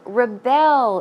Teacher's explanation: the stress goes on the second syllable